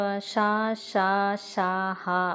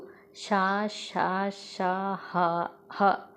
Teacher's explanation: మనం గాలిని బయటకి ఊదుతూ పలుకుతున్నాం కాబట్టి వీటిని ఊదుతూ ఊష్మాలు